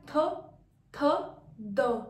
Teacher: हमारा जो टंग है उसका टिप, आगे का हिस्सा, और अपर जो टीथ है, फ्रंट टीथ, वो यूज में आ रहे हैं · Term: डेंटल